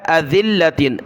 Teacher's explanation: ذال پر زبان نکالی، لام کے ساتھ ملایا